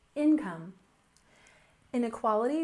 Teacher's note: with stress on the first syllable income